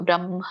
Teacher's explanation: ಎದೆಯಿಂದ ಯಾವಾಗ್ಲೂ ಕೂಡ ಹ ಉಚ್ಚಾರಣೆ ಆಗ್ಬೇಕು. ಬ್ರಹ್ಮ, ಮ ಹೇಳಿ ಹ ಹೇಳ್ಬೇಕು.